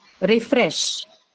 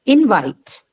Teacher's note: they take their primary stress on the second syllable